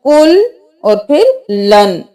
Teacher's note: काफ पेश लाम कुल, लाम दो जबर नून लन, कुल और फिर लन। यहाँ पर हम इदगाम बिला गुन्ना कर रहे हैं